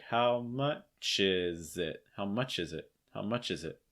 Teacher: that z sounds gonna link onto it